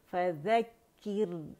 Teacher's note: रॉ बारीक होगी क्योंकि रॉ साकिन से पहले हमारे पास कसरा आ रही है, ज़ेर आ रही है, ठीक है।